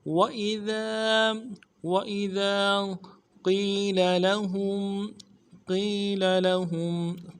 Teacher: قیل میں قوف کو یا کے ساتھ ملانا ہے، یا ساکن اس سے پہلے کسرہ ہو، یا مدہ ایک الف امداد میں کھینچیں گے۔